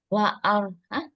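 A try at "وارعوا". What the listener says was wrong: War, bukan wa'ar. War'au.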